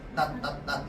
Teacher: 디귿 받침 발음은 혀 끝이 윗 잇몸에 닿으면서 입을 닫으면서 소리가 나요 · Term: 닫힘 소리